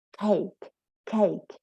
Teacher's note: So if they say cake and the origami is blown away, well, it is aspirated.